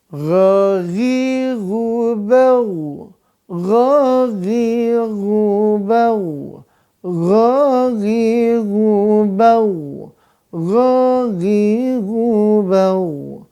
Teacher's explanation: Gha sama dengan kho, maka makhrajnya adalah di tenggorokan atas.